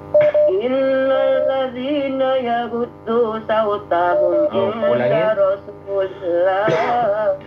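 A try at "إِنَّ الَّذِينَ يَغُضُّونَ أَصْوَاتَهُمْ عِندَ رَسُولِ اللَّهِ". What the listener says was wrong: Ulangin, bukan sautahum, aswatahum.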